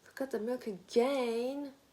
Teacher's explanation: it's important to emphasize the Rhythm and a slight rise and intonation for exasperation